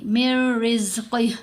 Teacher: یہ جو نون کی آواز ہے یہ را کی آواز کے اندر ہی مدغم ہو جائے گی